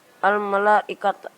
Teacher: karena ada huruf mat tabi'i bertemu dengan huruf hamzah dalam suatu kalimat, cara membacanya panjang 5 harokat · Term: mat wajib